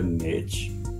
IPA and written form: nɪtʃ (niche)